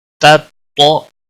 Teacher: پہلا تا باریک ہے، دوسرا موٹا پڑا جائے گا